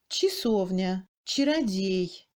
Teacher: Après le tché non accentué, quel que soit le degré de réduction, le A est prononcé comme I